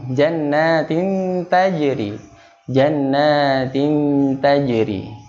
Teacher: Jadi ikhfa ala yaitu ikhfa yang bunyinya sangat samar, yaitu ada pada bagian akrob, ya, yaitu ta dan to.